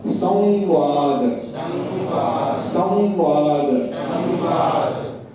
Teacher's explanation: इसमें व के ऊपर व को नासिका के साथ बोलना पड़ेगा।